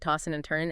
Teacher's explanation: Tossing and turning, you often drop the G sound, right? Tossing and turning, and the D and N might blend. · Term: G dropping